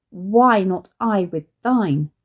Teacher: it's now only five syllables long and has a stressed ending